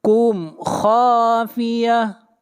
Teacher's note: میم کو ظاہر کر کے پڑھیں گے، اظہار شفوی ہوگا، اس لیے کہ میم ساکن کے بعد نہ میم ہے اور نہ با ہے۔